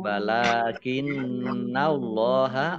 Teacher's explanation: Allahnya dibaca tebal karena harokat di depannya fathah.